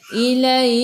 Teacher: Sifat huruf kaf hamas kena ada sedikit sahaja angin. Sedikit sahaja.